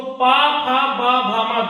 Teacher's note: दोनों होठ को जोड़ने के बाद ही हम इसका उच्चारण कर सकते हैं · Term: ओष्ठ